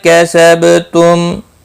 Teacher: با ساکن پر قلقلہ ہوگا اور وقف کی صورت میم ساکن ہی پڑھا جائے گا اور ملانے کی صورت میں اظہار شفوی ہوگا.